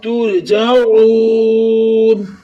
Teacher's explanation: تا کے اوپر پیش ہے اور را کے ساتھ ملا تو موٹا پڑا جائے گا · تو نون کے اوپر زبر ہے، نہ بغیر کھینچے پڑے، مگر ادھر وقف کریں گے ترجعون، وقف کی صورت میں نون کا جو زبر ہے وہ ختم ہو جائے گا، نون ساکن ہو جائے گی، مد عارض کو، یہ مد عارض کی علامت ہے، مد عارض کو ہم 2 4 یا 6 سیکنڈ تک کھینچ کر پڑھیں گے